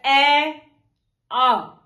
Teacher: कंठ। अ और आ स्वर का उच्चारण स्थान होगा कंठ।